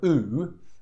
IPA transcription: u: